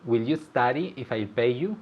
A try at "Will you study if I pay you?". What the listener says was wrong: Okay, wonderful, great.